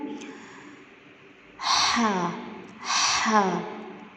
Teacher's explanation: اور اس میں ٹھنڈی سانس کی آواز آنی چاہیے. ٹھیک ہے، مطلب ٹھنڈی تو میں نے ویسے ہی کیا ہے، بس سانس کی آواز آنی چاہیے.